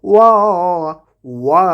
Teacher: ওয়াটাকে 2 ঠোঁট গোল করে উচ্চারণ করব।